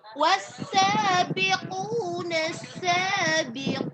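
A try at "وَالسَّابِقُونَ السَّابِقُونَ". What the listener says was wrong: Dibedakan hurufnya mana yang tebal, mana yang tipis ya. Ketika dia tipis jangan ditekan ya. Wa asha, lepasin suaranya, kurang lepas ya. Jadi jangan ditekan banyak suara. Kalau ketika ditekan dia masuk ke al-khaisum, rongga hidung ya. Kurang sempurna mahrajnya, a i u-nya kurang jelas.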